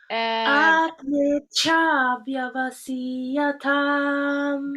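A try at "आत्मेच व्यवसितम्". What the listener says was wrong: Good. Hold on to that.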